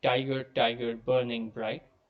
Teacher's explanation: The very first line is very straightforward. It's a series of trochees